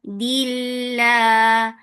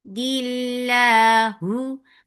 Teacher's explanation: Lafz jalala will be light because there is kasra before it. And lafz jalala is always long.